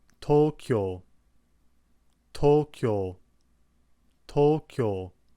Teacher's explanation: it's actually the U sound in this case, which is extending the O vowel sound. The pronunciation of the U vowel is still there ever so slightly, but generally it's more of an extension of the O sound, which comes before it. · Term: extended O sound